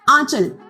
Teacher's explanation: आंचल बोलते हुए हमारी जो अंग की ध्वनि है वो नाक और मुख दोनों से बाहर आ रही है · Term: अनुनासिक